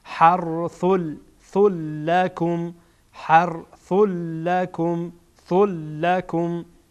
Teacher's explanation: اینجا ثا منون تنوین داره، بعدش لام آمده. لام از حروف ادغام هست، ادغام میکنیم